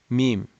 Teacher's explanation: 2 lips coming together and the nasal cavity being open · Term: mim makhraj